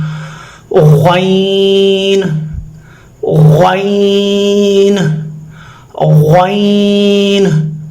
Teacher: زبان کی جو جڑ ہے نرم تالو کے ساتھ چپکائیں، ادنائے حلق یعنی منہ کی طرف جو حلق ہے وہاں سے ادا ہوگا۔